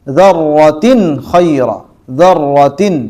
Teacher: ہم اظہار کر کے پڑھیں گے تنوین اور نون ساکن کو